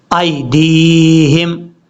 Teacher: دال کے بعد جو یا ہے اس کو لمبا کریں گے کیونکہ دال کے بعد جو یا ہے یہ یا مدہ ہے